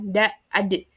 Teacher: Kalau huruf dal itu ketika kita ucapkan da ad itu tidak ada udara atau napas yang keluar gitu ya